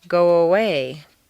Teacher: if a word ends in O, your lips are going to be in the forward position, so a W, a W, quite naturally leads into the next sound